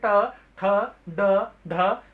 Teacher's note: उससे थोड़ा सा पीछे का हिस्सा वो आपका कठोर तालु, उससे और थोड़ा बैक साइड पे जाएंगे आपके ऊपरी हिस्सा मुख का, तो वो कहलाता है आपको मूर्धा। तो मूर्धा में आपकी जीभ मूर्धा से टच हो रही है, यानी ऊपरी भाग जो है पीछे का हिस्सा उससे टच हो रही होती है।